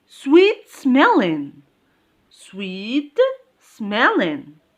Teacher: sweet smelling is an adjective so the stress goes in smelling